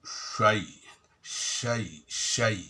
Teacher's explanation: Syai ini maharotnya sama dengan ya dan jim. Jadi tidak perlu menggunakan bibir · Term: shin